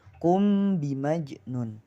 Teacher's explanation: Ikhfa syafawi ialah mim mati bertemu dengan huruf ba, ya, huruf ba hanya satu, maka hukum bacaannya yakni samar. Ikhfa itu samar, syafawi di kedua bibir. Jadi samarnya itu di kedua bibir.